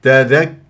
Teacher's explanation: ولا تجعل غنه في الواو